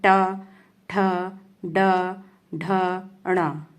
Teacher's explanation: पहली बात तो ये समझिए कि कठोर तालु के जो मध्य का भाग है वो मूर्धा कहलाता है। और जब हम इन व्यंजनों को बोलते हैं तो हमारी जीभ वहां पर कठोर तालु से टकराती है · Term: मूर्धन्य व्यंजन